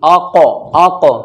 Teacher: क्योंकि क़ाफ साकिन है, जब क़ाफ साकिन होता है तो क़लक़ला होता है